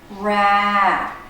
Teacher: the stressed syllable notice how the voice goes up and down in pitch